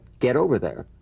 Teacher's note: the final T when it's followed by a word beginning with a vowel again it becomes in effect a medial T